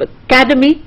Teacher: So you have academy. The K part is stressed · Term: primary stress